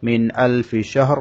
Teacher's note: নুন সাকিনের উপরে হামজা এসেছে এখানে স্পষ্ট করে পড়তে হবে গুন্না করা যাবে না